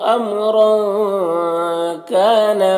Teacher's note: را کے اوپر 2 زبر ہے تو را کو پر پڑھیں گے اور تنوین میں اخفا ہو رہا ہے، تنوین کی آواز کو ناک میں چھپا کر پڑھیں گے۔ کاف میں الف مدہ 1 الف کے برابر کھینچیں گے۔